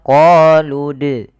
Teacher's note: dia memantulkan tanpa ada huruf hamzahnya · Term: qalqalah